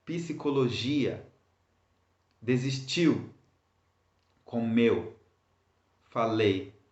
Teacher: so all of these words are stressed at the end of them. Why? Because you have two or more vowels together at the end of the word.